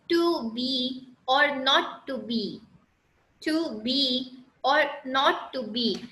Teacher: अब यहाँ पे देखिए एक अनस्ट्रेस सिलेबल होता है जो कि स्ट्रेस सिलेबल के साथ को फॉलो करता है, ठीक है, एक unstressed syllable that is followed by a stress syllable. · टू मैंने शॉर्ट करके बोला, दैट इज अनस्ट्रेस्ड सिलेबल, लंबा नहीं खिंच रहा, टू छोटा है, बी लंबा हो गया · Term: iambic pentameter